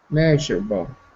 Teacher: the apostrophe is front of is in front of the m so that means the stress is on the first syllable